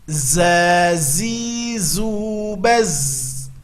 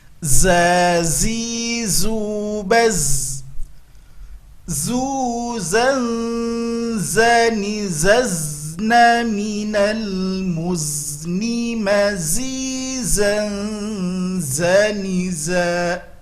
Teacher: Ujung lidah nempelnya ke gusi bawah dan kedua gigi ditautkan. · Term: huruf za